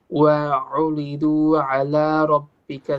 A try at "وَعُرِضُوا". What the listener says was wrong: Your dot needs to be more heavy. وعرضوا